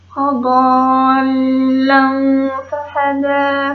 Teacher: Membacanya samar dengan dengung, ditahan selama 3 harokat. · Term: ifa